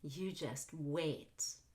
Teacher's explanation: Stress the last new content word, which is wait.